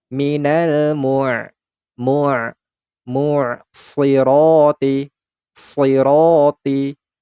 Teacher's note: Minal mu'. Huruf ain ini dalam keadaan sukun, maka alirkan sebagian suaranya.